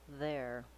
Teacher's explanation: Start with your tight American R, then add the A vowel, air, then add the voice TH sound